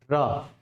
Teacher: लुंठित का मतलब है जब भी र का उच्चारण करते हो तो जीभ में क्या होती है आपकी? वाइब्रेशन, यानी ऊपर नीचे। ठीक है, तो ये जो र है लुंठित के साथ साथ हम इसे प्रकंपित ध्वनि भी कहते हैं।